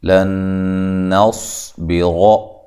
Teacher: لن نصبر، نصب نون کو باریک، صاد کو موٹا، اور یہاں نون ساکنہ کا ادغام ہے، نون ساکن کا ادغام ہے مع الغنہ